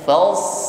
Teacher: Fasl pertama kita sempurnakan sifat huruf shad sukun. Fals sifatnya hamas, ada nafas mengalir, ada safir, ada bunyi desisnya.